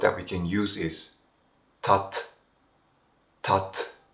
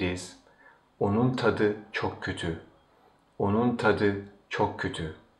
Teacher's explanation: the last T of the word tat changes into D, which is the voiced counterpart of T.